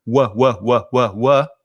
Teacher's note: instead of using the mouth and the lips to just do wha wha they're coming from the throat